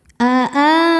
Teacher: Berikutnya ada hukum izhar syafawi karena mim sukun tidak menghadapi mim atau ba, maka mim sukun dibaca dengan izhar atau jelas.